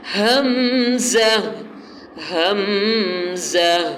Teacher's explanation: حمزہ کے شروع میں ہا ہے، پھر میم ساکن ہے، پھر زا سیٹی والا ہے، پھر آخر میں ہا ہے۔ یہ 4 حروف کے مجموعے سے حمزہ بنا ہے۔